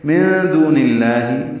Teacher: نون ساکن کے بعد دال آنے کی وجہ سے اخفا ہے، نون کی آواز چھپائیں گے. دو واو مدہ ہے، نون کی زیر کو لام اسم جلالہ سے ملا دیں گے. · نون کی زیر کو لام اسم جلالہ سے ملا دیں گے. من دون اللہ، لام باریک پڑھیں گے.